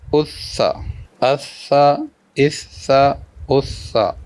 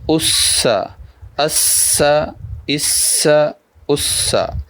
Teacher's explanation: سین سیٹی کے ساتھ پڑھنا ہے حروف صفیریہ میں سے۔ حمزہ سین زبر اس، سین زبر سا، اس سا۔